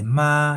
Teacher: Okay, the first tone remember is the uh you can call it neutral tone or or flat tone and is a high pitch tone